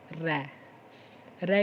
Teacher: र के उच्चारण करते समय जीभ को 2-3 बार कंपन करना पड़ता है, इसको कहते हैं प्रकंपित वर्ण।